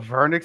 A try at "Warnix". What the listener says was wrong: And it's not like V, it's W.